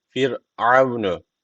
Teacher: Bakın ra harfi cezim öncesindeki harf alttan bağlandığı için ra harfi burada ince okunacak.